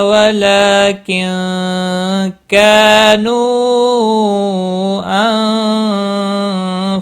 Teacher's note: نون ساکن کے بعد حروف اخفا کا کاف آیا ہے، اخفا حقیقی ہوگا، غنہ کے ساتھ پڑھیں گے۔